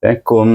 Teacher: lebih kepada bunyi mim dengan bibir tertutup mim di sini kum bunyi kum bunyi kepada mim daripada Kaf